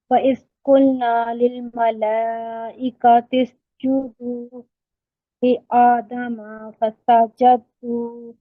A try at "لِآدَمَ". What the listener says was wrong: وَإِذْ قُلْنَا لِلْمَلَائِكَةِ اسْجُدُوا لِآدَمَ. میم لمبا نہیں ہوگا، ٹھیک ہے، یہ مسٹیک ہوئی ہے، میں مارک کر دیتی ہوں.